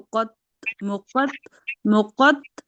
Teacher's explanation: یہاں پر 2 حروف مستعلیہ ہیں، قوف اور تو موٹے گول پڑھے جائیں گے، اور پھر آئین کی آواز آئے گی اور اس کے ساتھ الف مدہ لگائے، تو مقت تو آت آ آ آت ہے نا.